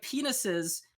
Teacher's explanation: like penises, the emphasis is on the first syllable, right? She's putting the downbeat on the last syllable.